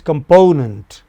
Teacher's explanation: So po takes nearly as much time as com and nent together. Or po takes even longer.